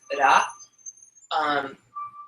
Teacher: when I said the Ra part, I rolled the R a little bit, so it's Ra.